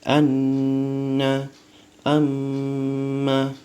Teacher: Jadi harus lebih dari 2 harokat, 2 harokat lebih sedikit, dan tidak boleh lebih dari 3 harokat. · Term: gunahnya akmal